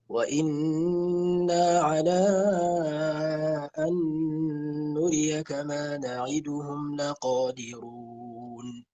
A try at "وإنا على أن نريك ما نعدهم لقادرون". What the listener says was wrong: ما نعدهم، لا تختلس، ما نعدهم.